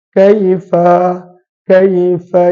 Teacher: makhraj Fa adalah hujung gigi atas perlu untuk menyentuh bibir bawah